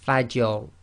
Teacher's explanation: the Fa is light, empty mouth, you must maintain that, and then you go into a heavy mouth on the Ra